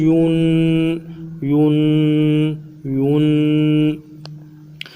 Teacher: شروع میں ہونٹوں کو گول کریں گے، پھر آخر میں ہونٹوں کو بالکل سیدھا کریں گے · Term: دو پیش